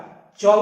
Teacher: যখন আমরা চ উচ্চারণ করছি জীবটা একটু নিচেই টাচ হচ্ছে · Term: তালু